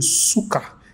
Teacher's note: if you emphasize the first syllable Suka then you are saying vomit if you emphasize the second the second Suka then you have